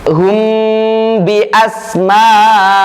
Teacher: Mim mukhfah ini muncul ketika dalam kondisi sukun bertemu dengan huruf ba.